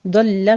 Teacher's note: ضل میں دعات کو پر پڑھنا ہے، لام کی تشدید ادا کرنی ہے